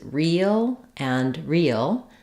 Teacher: the vowel e which is a high front tense vowel is typically spelled with letters e e e or EA it